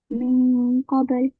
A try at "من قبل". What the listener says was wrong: Again, you need to make the قاف إخفاء heavier as well. من قبل.